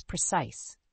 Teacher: The word precise has two syllables, with the stress on the second syllable.